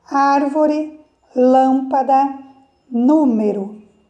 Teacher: proparoxítona a sílaba tônica mais forte é a antepenúltima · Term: Proparoxítonas